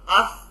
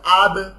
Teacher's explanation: কোনো কলকলা নাই, ধাক্কা নাই, জাস্ট আফ, থেমে যাচ্ছে